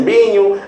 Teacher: Há a questão do betacismo, os portugueses que trocam o V pelo B, não é? Em vez de dizer vinho, dizem binho.